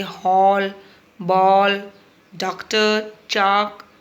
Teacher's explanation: इसका उच्चारण आ और ओ के बीच की ध्वनि के रूप में होता है, इसका चिन्ह ये होता है। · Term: आगत ध्वनि